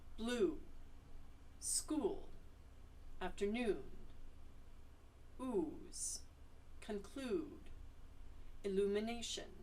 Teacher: To pronounce the sound, open your jaw slightly, curve your tongue quite high towards the back of your mouth, round your lips and push them forward · Is more relaxed and short, while oo is longer, with a rising then falling intonation and a more pursed lips, or lip. To try to make these movements with your mouth and repeat this sound while watching this animation. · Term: oo sound